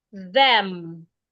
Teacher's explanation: you put your tongue in between your upper teeth and your lower teeth, and this time you make a vibration. Remember, the difference between the voiced and the voiceless consonant is the vibration. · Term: voiced TH sound